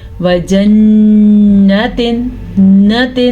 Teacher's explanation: نون کے اوپر شد آ گئی تو غنہ ہوگا، لیکن ایسا نہ ہو غنہ کرتے کرتے نون کو لمبا نہیں کرنا